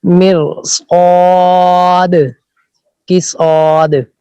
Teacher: استعلاء کے معنی اوپر کی جانب اٹھنا. اس کے ادا ہوتے وقت زبان اوپر تالو کی طرف اٹھتی ہے